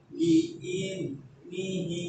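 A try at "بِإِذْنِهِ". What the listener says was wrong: Kurang rokhwa. Alirkan dulu bi in ni itu.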